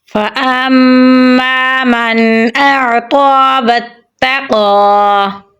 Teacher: حمزہ کو عین کے ساتھ ملائیں گے کیونکہ عین کے اوپر جزم ہے، عین کو گلے کے درمیان والے حصے سے نکالیں گے۔ قاف پہ کھڑی زبر ہے تو یہاں پر ہم لمبا پڑھیں گے اور قاف کو پر یعنی موٹا پڑھیں گے۔ واو کو تا کے ساتھ ملائیں گے کیونکہ تا کے اوپر تشدید ہے، قاف کو پر یعنی موٹا پڑھیں گے۔